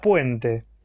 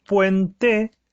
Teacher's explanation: Yo la separo en dos sílabas, puente, y tengo que la vocal cerrada U, en ese caso también es átona, porque el acento recae sobre la letra E, sobre la vocal E. Con lo cual ahí tengo nuevamente un diptongo formado en este caso por una vocal cerrada tónica, perdón, por una vocal cerrada átona, más una vocal abierta.